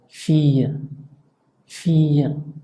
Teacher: cuando está doble, se pronuncia como doble L tenue